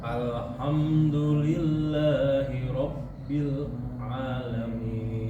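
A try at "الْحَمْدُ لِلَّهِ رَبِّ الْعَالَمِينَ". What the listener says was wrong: Masih putus tapi. Di situ bukan panjang Pak. Kan di situ nggak ada mad. Di situ bukan panjang Pak, tapi namanya tawasud. Huruf lam itu ada tawasud. Tawasud itu Pak seakan-akan satu ketukan. Alhamdu, tidak sampai itu dua harokat.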